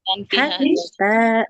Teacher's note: ha-nya nggak boleh panjang karena fathah tak ada alifnya